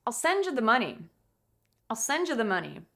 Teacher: the most important word in the sentence at the end, which is money